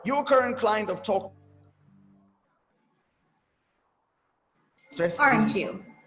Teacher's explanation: falling tone right here falling tone means I'm sure and I'm just adding more confirmation to it